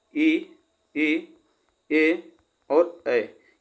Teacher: यह जो होते हैं हमारे अग्रस्वर, यह जीभ के अगले भाग से उच्चारण होते हैं